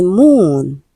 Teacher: This has the long vowel sound ooh.